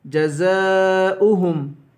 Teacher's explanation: زا کو 5 الف کے برابر کھینچ کر پڑھیں گے اوہم حمزہ پڑھیں گے واو نہیں پڑھیں گے جزاؤہم حمزہ کی